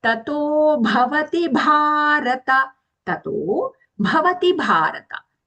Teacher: when we say Bharata, long and Mahaprana.